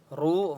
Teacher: را کو ایک الف کی مقدار کھینچ کر پڑھیں گے اور را کو پر پڑھیں گے. نہ وقف کریں گے.